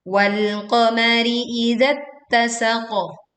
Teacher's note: Kita kemudian menekan pada huruf ta, izat tasaqo. Kemudian berwaqaf pada huruf qaf dengan suara yang kuat pantulannya dan tebal